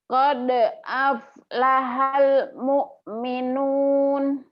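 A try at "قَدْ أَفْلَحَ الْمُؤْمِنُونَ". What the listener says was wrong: udah-udah bagus tapi qalqalahnya ulah lebay lebay teuing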